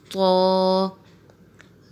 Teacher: طا کا مخرج یہ ہے کہ زبان کی نوک اوپر والے دانتوں کی جڑ سے لگے سامنے کے تو طا ادا ہوتا ہے